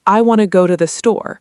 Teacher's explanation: It sounds more like, "I want to go to the store," with want to and the being weak and fast, and go and store being stronger. If you say every single word with equal, strong emphasis, it actually sounds unnatural and can be harder to understand, even if the grammar is flawless.